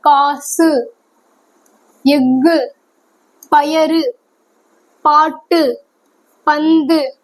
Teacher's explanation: இந்த மாதிரி சொல்லுக்கு இறுதியில் வரும் பொழுது என்ன ஆகுதுன்னா ஒரு எழுத்துல ஒரு மாத்திரையில இருந்து அரை மாத்திரை அளவா குறைந்து ஒழிக்குதுன்னு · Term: குற்றியல் உகரம்